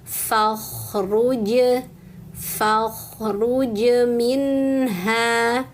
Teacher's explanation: fa fathah ketemu alif tapi jangan dipanjangkan karena setelahnya ada huruf dengan tanda sukun. Huruf dengan tanda sukun atau tasydid itu sejatinya mau cepat dibaca Bunda.